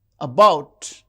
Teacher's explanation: the second syllable is stressed.